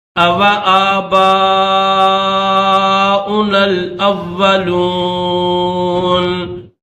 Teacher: نون کے اوپر زبر ہے لیکن یہاں پر وقف کریں گے تو اس زبر کو نہیں پڑھیں گے، صرف نون کی آواز پیدا کریں گے